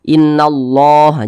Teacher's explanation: kalimat Allah dibaca tebal dibaca tafkim